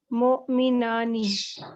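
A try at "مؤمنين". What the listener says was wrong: नई, नई, या साकिन है ना, नई नी। मोमी, बोलो, मोमी, नई नी।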